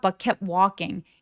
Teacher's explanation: 이렇게 자음이 연결이 많이 되어 있을 때는 중간에 T를 삭제해서 발음 안 하셔도 돼요.